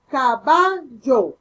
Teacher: el yeísmo consiste en pronunciar la doble L de la misma manera que la Y, como por decir, cuando decimos caballo, no decimos caballo, sino que decimos caballo, con Y, como que si fuera una Y, no doble L, caballo deberíamos de pronunciar.